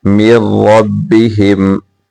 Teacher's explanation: یہاں میم کو را کے ساتھ ملائیں گے را کو موٹا کر کے پڑھیں گے